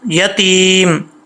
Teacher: جب سٹاپ کریں گے تو میم کو ساکن کر دیں گے، اس کی زبر نہیں پڑھی جائے گی، ٹھیک ہے۔ یا دعل یتیم، اب اس کو عل نہیں پڑھنا، لام میں کلکلا نہیں کرنا، عل، آواز لام پہ جم جائے، ٹھیک ہے، عل یتیم۔